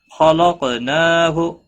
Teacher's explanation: مشدد پر گنہ ہوگا، نا الف مدہ ہے، ایک الف کے برابر کھینچ کر پڑھیں گے۔ خلقناہ، خا اور قاف دونوں حروف مستعلیہ میں سے پر پڑے جائیں گے، قاف ساکن ہے، اس پر قلقلہ بھی ہوگا، نا کے اوپر کھڑی زبر ہے، ایک الف کے برابر کھینچ کر پڑھیں گے، ہو کو کھینچنا نہیں۔